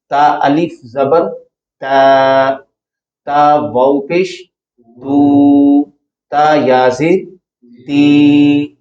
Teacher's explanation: ان کو 1 الف کی مقدار کے برابر لمبا کیا جاتا ہے، یا یوں کہہ لیں کہ ایک زبر کی جو آواز آپ پڑھتے ہیں، کسی بھی حرف کے اوپر آپ تا کے اوپر زبر کی آواز پڑھیں تو آواز آئے گی تا، اس آواز کو 2 گنا کر دیں تو وہ مد اصلی کی آواز بن جائے گی، بولیے گا اتنی آواز۔